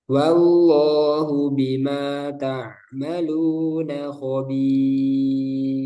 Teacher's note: ro sukun. Sebelumnya ada ya sukun. Nah, itu selamanya tipis. Pokoknya kalau ada ya sukun langsung, "Oh, ini pasti tipis." Wallahu bimaa ta'maluna khobir.